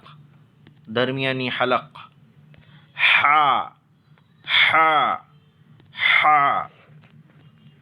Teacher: ये हा भी हलक से ही निकलता है लेकिन हवा के साथ, यानी हवा बाहर निकलनी चाहिए। हा का मखरज यहाँ से दरमियानी हलक। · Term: बड़ी हा